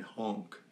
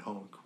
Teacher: there are enough english words i'm discovering that use the french nasal vowel